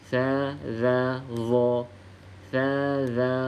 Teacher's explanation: pangkal lidah ni terangkat bila kita sebut huruf d Kenapa terangkat Sebab Dia ada istilak huruf ada sifat istilak kita